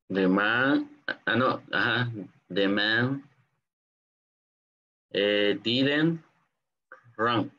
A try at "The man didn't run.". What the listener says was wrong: The man didn't run. Yes. Great job.